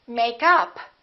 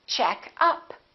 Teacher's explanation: it's a noun we stress the first part